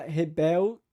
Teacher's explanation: ela também faz a ditongação do l